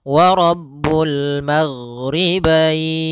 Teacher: ghain adalah sifatnya rokhawah. Rokhawah itu mengalirnya suara, sehingga tapi tidak ada nafas kita, tidak enggak, tapi dia wa Rabbul maghribain.